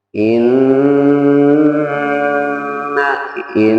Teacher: Nun bertasdid itu berarti harus digunakan di rongga hidung